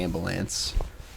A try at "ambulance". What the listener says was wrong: Instead of bu, it was buh. Buh.